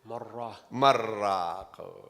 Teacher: You're merging and changing. You change the noon into a Ra. and you merge the two ra. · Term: idgham bila ghunna